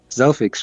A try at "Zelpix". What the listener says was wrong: No, with it like a P. Zelpix.